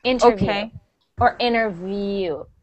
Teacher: even if you're going to take out that t sound and say inner you have to say the V you have to have the V interview or interview uhuh interview